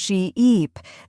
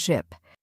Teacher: The difference is in how long you hold the vowel sound. Right. A great way to practice this is by exaggerating the long vowel sounds.